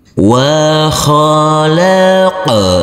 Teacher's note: Huruf nun kita baca panjang dengan panjang 2 harokat karena di atas huruf nun ini ada huruf alif kecil yang berdiri tegak lurus.